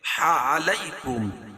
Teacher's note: علیکم، علی یا لین ہے، یا ساکن سے پہلے زبر ہو تو یا لین ہوتا، اس کو نرم آواز کے ساتھ جلدی ادا کریں گے